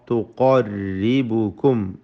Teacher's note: ഖാഫ് തഫ്ഖീം ചെയ്ത് തടിപ്പിച്ച് ഓതേണ്ട ഇസ്തിഅലാഇൻ്റെ ഹർഫുകളിൽപ്പെട്ടതാണ്.